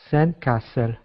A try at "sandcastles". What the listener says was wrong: Try to get that Z at the end.